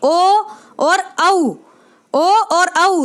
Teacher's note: कंठ ओष्ठ्य वर्ण यानी कि कंठ और ओष्ठ का सहारा लेकर हम इनका उच्चारण करते हैं · तो जो आपका जो इसको बोलने में, उच्चारण में जो आपको दबाव महसूस होगा वो आपको अपने कंठ की तरफ महसूस होगा